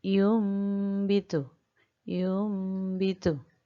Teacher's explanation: cara membaca iqlab itu adalah kedua bibir menempel dengan lemah